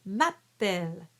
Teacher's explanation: you can emphasize the double P as in Italian, where you would do m'appelle.